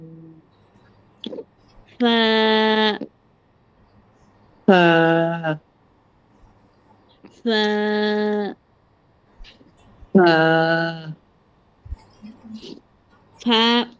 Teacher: দুই ঠোঁটের মাঝখান থেকে না, ফাটা হ্যাঁ, উচ্চারণ হবে নিচের ঠোঁটের পেটের সাথে উপরে দুই দাঁত লাগবে।